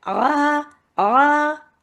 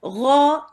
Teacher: यहां पे आ ये बारीक है, गौ ये फिर पुर है, मोटा है। अक्सर इसको लोग मोटा कर देते हैं क्योंकि हलक से निकालना होता है, थोड़ा मुश्किल होती है, उस मुश्किल में उसको मोटा भी कर देते हैं, वो जो कि नहीं करना है, ठीक है, इसीलिए बहुत गौर से देखना है।